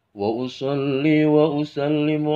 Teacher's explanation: shod itu suaranya siul, ya, siul-siulan